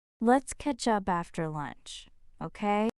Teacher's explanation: Feel how catch up linked together there?